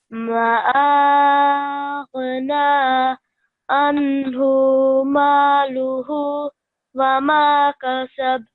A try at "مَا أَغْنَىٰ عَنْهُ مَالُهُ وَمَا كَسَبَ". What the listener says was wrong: Okay, so it has to be prolonged longer. ما أغنى عنه ماله وما كسب.